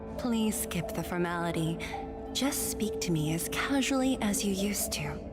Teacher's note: She has changed it to be a little bit more breathy